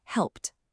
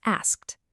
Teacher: If the very last sound of the verb is unvoiced, so remember, no buzz, like a P or a K, then the ed ending is pronounced like a sharp T sound. It's like a quick little tap. So the word help ends in P, that's unvoiced, so it becomes helped.